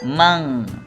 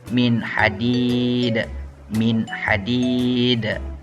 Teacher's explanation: nun mati itu kita tidak baca secara dengung, tapi kita baca secara jelas. Man, jangan baca mang.